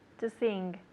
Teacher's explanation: you hear how she's saying the N and the G together to sing. It's a nasal sound